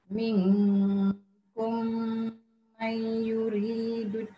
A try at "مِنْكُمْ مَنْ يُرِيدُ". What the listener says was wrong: Masih tak cukup tu. Minkum mai tertinggal yang tu. Yang mai tu ketinggal satu. Dia memang dia kalau satu ayat tu ada banyak yang dengung, memang biasa tercicir.